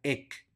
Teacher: la H es muda por lo tanto esa palabra se pronuncia ec